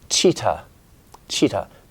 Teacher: example in cheetah your tongue has bent up and touch you making contact and then creating that friction it's a stop friction sound